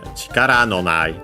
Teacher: low high high up to ra included and then everything else low after it